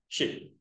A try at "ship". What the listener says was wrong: Not sheet, you know. There's difference.